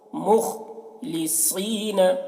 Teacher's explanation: خا کو بھی موٹا کر کے پڑھتے ہیں